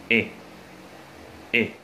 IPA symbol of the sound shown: ɪ